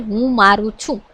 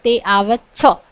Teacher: સહાયકારક છ ના રૂપોના અંત્ય સ્વરનો લોપ થાય છે